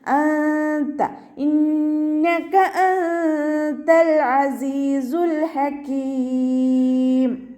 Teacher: നൂൻ സാക്കിനയെ മറച്ചു വെച്ചിട്ട് മണിച്ചോതി കൊടുക്കുക. നൂനിൻ്റെ സൗണ്ടിനെ വ്യക്തമായിട്ട് കേൾപ്പിക്കരുത്. അൻത താഇൻ്റെ മഖ്റജിലേക്ക് നമ്മുടെ നാവിനെ കൊണ്ടുപോയിട്ട് വെക്കുക, പക്ഷെ അവിടെ തട്ടിക്കരുത്.